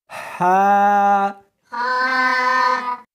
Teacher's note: اس کو حلق میں سے نکالنا ہے اور ساتھ میں ہوا بھی ہونی چاہیے۔ ہا، ہا نہیں پڑھنی بلکہ اس کو حلق میں سے نکالنا ہے، سینے میں سے نہیں نکالنا۔